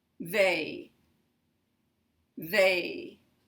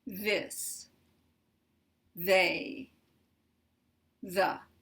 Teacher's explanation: the tip will be pushed out between the teeth just a little bit they they a little part of my tongue comes in that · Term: th sound